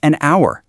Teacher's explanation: The H is totally silent. The first sound you actually hear is ow, a vowel sound.